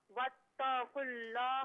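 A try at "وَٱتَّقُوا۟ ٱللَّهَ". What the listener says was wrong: नहीं, वत्ता जो आप खींच रही है ना, इसे खींचिए मत। वत पढ़े। वत्तकुल। वत्तकुल्लाह।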